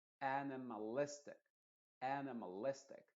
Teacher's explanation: las dos que tienes que enfatizar es A, la primera, y luego listic